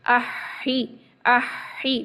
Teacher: پہلے ساکن والا ہا پڑھیں گے، ساتھ ہی اس کے ملاتے ہوئے ہی ہم زیر والا جو ہے نا ہا پڑھ دیں گے. احی احی، پہلے یہ ساکن ہے اور ہی ساتھ ہی ملا کے یہ وہ والا زیر والا ہے، ٹھیک ہے. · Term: دوہری آواز